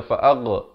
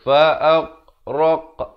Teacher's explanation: Fa'aghraqna, ghain jangan berikan pantulan, jangan baca fa'ag, tak betul. Fa'aghraq, yang raq ini baru diberikan lantunan kerana di sini qaf merupakan huruf qalqalah, ghain bukan huruf qalqalah.